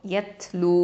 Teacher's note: லாம் தொம்மா வாவ் மத்து லூ 2 ஹரக்கத்தை நீட்டணும்